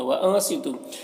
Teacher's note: व अंसितु, नून में इख्फा हो रहा, नून के आवाज़ को नाक में छुपा कर पढ़ेंगे। सौद हुरूफ मुस्तालिया में से पुर पढ़ेंगे, तू में वाव मद्दा है, एक अलिफ के बराबर खींचेंगे।